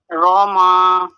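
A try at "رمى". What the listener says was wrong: ناک میں آواز نہ ہے رما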